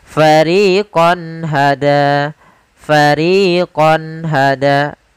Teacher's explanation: suara qonnya harus jelas tidak boleh ditahan dengan gunna karena izhar adalah menjelaskan menampakkan suara nun sukun dan tanwin dengan · harus jelas tidak boleh ditahan dengan gunna karena izhar adalah menjelaskan menampakkan suara nun sukun dan tanwin dengan jelas tanpa disertai ghunah